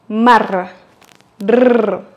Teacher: Ici, vous allez prononcer le R roulé car il est à la fin du mot décomposé.